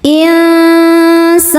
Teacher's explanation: Karena nun sukun bertemu sin. Cara bacanya nun disamarkan ke sin disertai dengungan. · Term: ikhfa hakiki ausat